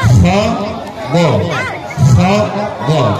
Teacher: Di ujung kerongkonganmu keluar lagi 2 huruf, yaitu kha sama goin.